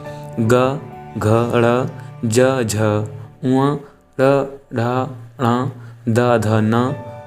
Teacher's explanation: अब सघोष में क्या होगा कि स्वर तंत्रियों में कंपन होगा। तो जिन व्यंजनों के उच्चारण में स्वर तंत्रियों में कंपन हो उन्हें हम सघोष कहते हैं।